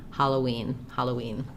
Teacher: if I move from O-E, we just naturally glide through that W sound · as we move from an O to an E, O, that rounded sound, to an E sound, that W will sneak in there regardless of whether the word is spelled with a W.